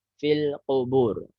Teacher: Tadi yang qu ya agak paskan di dalam ya. Jangan sampai maju ke ka.